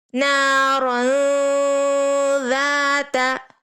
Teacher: ہمیں نون کی آواز کو ناک میں چھپا کر غنہ کر کے اخفا کر کے پڑھنا ہے